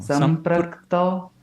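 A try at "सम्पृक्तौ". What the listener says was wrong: Closer. Ra बोल रहे हैं. It's I'm hearing ra. It's not sam. नहीं. Sampraktau. Ra नहीं है वो. Ra would be pa with that line, right? Pra. ये अलग है.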